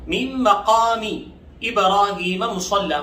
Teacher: مصلی کے صاد کو موٹا پڑھیں گے اور لام پر تھوڑا سا رک کر سختی سے پڑھیں گے. مصلن سے مصلی وقف کی وجہ سے پڑھا جائے گا.